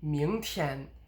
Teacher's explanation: the 天 is lower than the point where the 明 climbs to. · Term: unstressed version